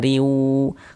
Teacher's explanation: Huruf waw ini huruf idgham bi gunnah ya, hukumnya berarti idgham bi gunnah. Maka bunyi tanwinnya dimasukkan ke huruf waw sehingga kita baca riu.